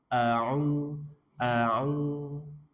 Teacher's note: ain tengah tenggorokan wastul halki